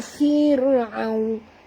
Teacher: Faqala lahu fir'aun. Ra terkik, ra tipis ya. Jangan tebal ya.